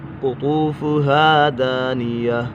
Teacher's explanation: قطو قاف پر ہے، طا بھی پر ہے، حرف مستعلی میں سے